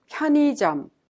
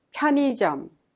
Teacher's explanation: the second syllable ui is pronounced like e instead of ui which is a little bit hard to pronounce